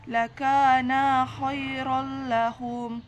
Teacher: Kemudian idgham bila gunnah, karena huruf ra berharakat fathah tanwin bertemu huruf lam bertanda tasydid, dibaca lebur tanpa dengung, bunyi tanwin hilang · Mad asli atau Mad Thobi'i karena huruf Kaf berharakat fathah bertemu Alif dan setelahnya tidak bertemu Hamzah sukun wakaf dan tasydid cara membacanya